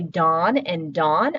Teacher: with my dialect feature, when I say Don and Dawn, I actually pronounce those the same